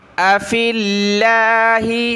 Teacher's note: اگلی آیت دیکھیں قالت رسلهم افی اللہ, حمزہ زبر آ, فا کو لفظ اللہ کے ساتھ ملائیں گے. لفظ اللہ کا باریک ہوگا کیونکہ فا پر زیر ہے.